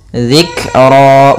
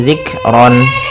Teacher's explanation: ketika di akhir bacaan dinamakan dengan mad iwad. Panjangnya adalah dua harakat.